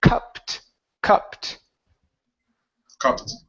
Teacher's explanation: So here, instead of saying coop it, Okay, first up, this is a sound, k, and then we have an ed ending. This will sound like a t. So the word is cupped, cupped.